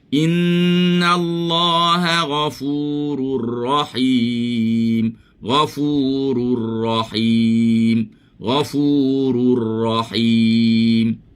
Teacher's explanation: Jangan biar jadi bunyi ra tu takrir dia banyak sangat.